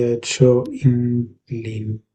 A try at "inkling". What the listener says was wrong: Yeah, inkling. So I'm not hearing the sort of the ling doesn't sound spot on when you're saying it, um, but but basically the same sort of way, same sort of thing you're doing with your tongue to get the NK sound. Pretty much the same thing.